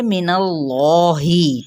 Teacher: अल्लाह का जो लाम है ना, उसको मैंने मोटा करके पढ़ा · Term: तफ़ख़ीम